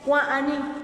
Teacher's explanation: Es que ahí estamos alargando un poquito la A.